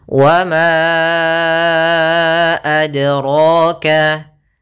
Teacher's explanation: Yaitu kita panjangkan 4 atau 5 harokat. Maka ma-nya kita panjangkan dahulu baru kita baca a-nya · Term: mad jaiz munfasil